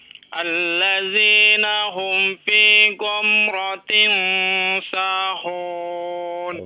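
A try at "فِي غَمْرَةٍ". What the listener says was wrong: Ghamra, ya, bukan go, ghamra.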